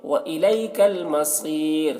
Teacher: وَإِلَيْكَ الْمَصِيرُ، صاد کو پر پڑھیں گے، صاد حرف مستعلیہ میں سے ہے، اور را کو باریک پڑھیں گے کیونکہ رائے ساکنہ سے پہلے یا ساکن ہے